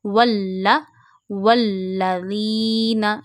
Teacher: Put a stress on lam because of tashdeed. When tashdeed comes on any letter, we read that letter two times.